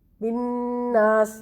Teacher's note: نون پہ شد ہے تو نون مشدد اور میم مشدد پہ غنہ کرتے ہیں